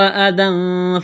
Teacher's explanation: ذال کو پڑھتے وقت زبان تھوڑی سی باہر نکالیں گے، اس یا کو نہیں پڑھیں گے۔ · تنوین کے بعد فا ہے، حروف اخفا ہے، غنہ کریں گے، آواز ناک میں چھپائیں گے۔ فا عین زبر فا، تا زبر تا، فعتا، زا زیر زی، فعتزی، زا میں سیٹی کی آواز پیدا کریں گے۔